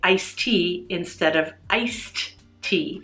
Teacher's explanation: the last sound of the first word is not pronounced and the syllables blend together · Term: connected speech